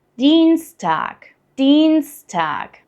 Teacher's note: we got a long stretched E sound